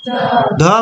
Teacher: दांत को स्पर्श करके इसका उच्चारण किया जाता है